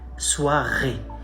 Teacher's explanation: the guttural R sounds like you're throwing up, like something is stuck and you're trying to spit it out